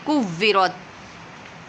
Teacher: اس کاف کو باریک پڑھیں گے، قوف جو ہوتا ہے قوورت نہیں پڑھیں گے